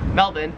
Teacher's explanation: the australian accent just leaves the r off if it's ever in the last syllable of a word so you would pronounce melbourne melbourne and you would pronounce karen's